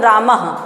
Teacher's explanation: जैसे लोगों की सांस फूलती है तो उसी तरह से यहां से भी बोलने में सांस निकलती है। विसर्ग को वस्तुतः एक छोटा ह समझना चाहिए